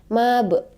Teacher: ba bersukun. Itu disebut dengan qalqalah sughra karena berada di tengah-tengah ayat ya, mab. Jadi teman-teman harus pantulkan mab gitu.